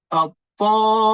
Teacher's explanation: Mim tu dia ada dengung di bila sabdu. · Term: Mim musyaddadah